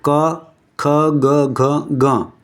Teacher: સ્થાનો હોય છે જેમ કે ક ખ ગ ઘ ગ તો ક નો જે આખો વર્ગ છે એ કંઠે થી બોલાય છે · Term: કંઠ્ય